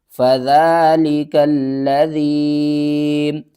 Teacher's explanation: لام مشدد ہے، 2 بار پڑھیں گے اور سختی بھی کریں گے۔